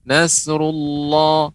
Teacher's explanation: ketika mengucapkan Nasrulloh Allah pengucapannya tebal